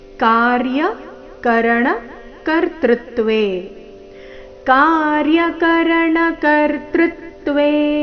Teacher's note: ಮೊದಲನೇ ಚರಣದಲ್ಲಿ ಒಂದೇ ಒಂದು ಆಘಾತ ಅದು ಕರ್ತೃತ್ವೇ ನಲ್ಲಿ ದೃ ಮೇಲೆ